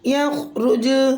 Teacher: حالت وقف میں جیم کا پیش ختم ہو جائے گا، جیم ساکن ہو جائے گا، جیم میں قلقلہ ہوگا، قلقلہ کبرا